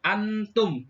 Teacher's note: nun mati yang dibaca samar atau ikhfa, yaitu pada lafadz antum